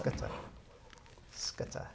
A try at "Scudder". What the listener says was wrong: No, you swallow it. You keep it close at hand. Speak it out.